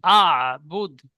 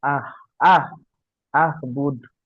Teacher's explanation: আ টান হবে না, হামজাটি আইনের সাথে যুক্ত হবে। আবুদ। আহ আহ আহবুদ হা মা হয়ে যাচ্ছে।